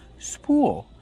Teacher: Spool, we pronounce with a long oo plus a dark l.